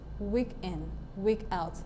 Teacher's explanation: So in week in we have a stressed syllable followed by an unstressed syllable. So week is stressed, week is stressed, and in is not stressed. · In the second phrase there we have week being stressed and out being unstressed. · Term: trochee